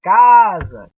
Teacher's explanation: cá é a sílaba mais forte na pronúncia da palavra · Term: sílaba tônica